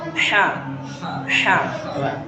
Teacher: Ini dia haknya kecil, ini haknya kecil, dia letaknya di tenggorokan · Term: hak kecil